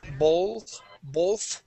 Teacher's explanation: going from that O to the TH, when your tongue goes between your teeth, it almost sounds like an L. Okay, but I don't actually curve my tongue up to pronounce that L.